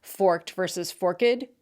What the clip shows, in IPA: fɔrkədvs. fɔrkt